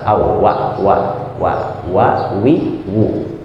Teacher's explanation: Makhrajnya ada di dua bibir ya, dua bibir tapi bin fitah terbuka. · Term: huruf waw